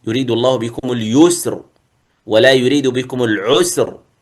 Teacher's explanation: فإذا وقفت على كلمة العسر فإنك تقف عليها بالتفخيم، يريد الله بكم اليسر ولا يريد بكم العسر. هذه الراء في اليسر والعسر مفخمة، بخلاف الآية الأخرى إن مع العسر يسرا.